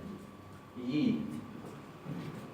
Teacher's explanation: Se pronuncia un poco más cerrada que una I. · Es casi como si tuviera una leve Y adelante. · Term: Yod